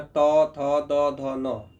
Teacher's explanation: आप महसूस करते हैं कि जीभ जो है आपका दांत के अग्र भाग में जड़ में जाकर के टकराता है। तभी जाकर त, थ, द, ध का उच्चारण हो पाता है। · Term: दंत्य वर्ण